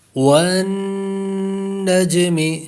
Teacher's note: والناشطات والنجم، جیم پر کلکلا بھی کریں گے